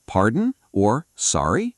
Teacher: Another short option is, Pardon? or Sorry? with a rising tone.